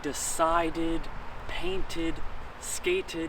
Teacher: when it ends in t or a D sound like decided painted skated then you do the ID